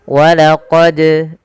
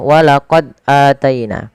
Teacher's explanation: Maka apabila ada huruf dal berharakat sukun, maka ia kita haruskan untuk dipantulkan bacaannya. Karena dal termasuk salah satu sifatnya adalah qalqalah yang artinya memantul